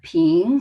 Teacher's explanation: second tone is a rising tone. And sounds like you're asking question like, what?